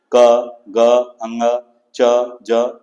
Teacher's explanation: प्रत्येक वर्ग का पहला तीसरा और पांच वर्ण अल्पप्राण है अर्थात इनके उच्चारण में कम प्राण वायु या ह का की ध्वनि उत्पन्न नहीं होती है